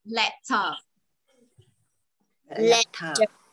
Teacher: lưỡi đầu lưỡi chân răng và hơi ờ một chút nha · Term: âm L